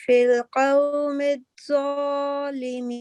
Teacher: कौम में जो है मद्दलीन होगी क्योंकि वाव साकिन से पहले जो है मफ्तू हरफ है, और इसको हम 2 सेकंड के लिए नरमी से गोलाई में पढ़ेंगे